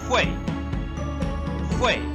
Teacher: on the fourth tone going down